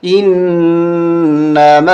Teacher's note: یہاں ہم غنہ کریں گے، مشدد نون ہمیشہ غنہ ہوتا ہے